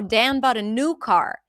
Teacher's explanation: If I want to emphasize the new, because new is the important information here, I would stress it. But if I'm just describing a situation where he bought a new car, then I would probably stress the noun.